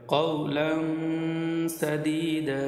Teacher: এখানে তানবিনে পড়ে সিন ইকফার হরফ গুণা করে পড়তে হবে